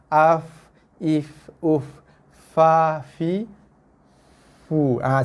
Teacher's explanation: Sentuhan gigi atas dengan bibir bawah.